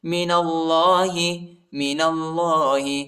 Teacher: اللہ کے نام کو موٹا پڑھیں گے، پر پڑھیں گے، الف نہیں پڑھا جاتا، الف پر حرکت نہیں۔